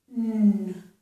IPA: ŋ